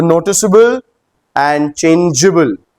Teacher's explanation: मतलब क और ग नहीं बोल रहे हैं, स और ज बोल रहे हैं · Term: soft pronunciation